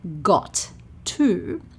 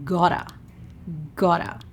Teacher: We join the two words, we lose a T, and we just go 'gotta'.